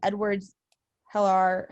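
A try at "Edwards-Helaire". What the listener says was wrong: Hilaire, yeah. The H is silent.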